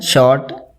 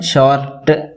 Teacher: they will pronounce that first one short without the sound of R, and the second one short with a sound of R. But in RP they can't use the sound of R after a vowel, so they use a extra vowel for that sound.